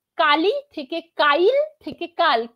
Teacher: কি বাদ হলো মাঝখানে ই ধ্বনিটা বাদ হয়ে গেল · মাঝখানে ই ধ্বনিটা বাদ হয়ে গেল। এই যে আধুনিক বাংলা এসে আমরা অপিনিহিতির মাঝখানে ই ধ্বনিটা বাদ দিয়ে দিলাম, এই স্তরটাকে বলা হচ্ছে অভিশ্রুতি।